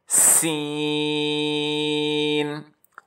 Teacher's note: सीन में सीटी की आवाज़ अच्छी खासी पाई जाती है।